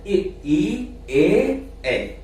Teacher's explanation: अग्र स्वर का मतलब है कि जीभ का आगे वाला हिस्सा हिलता है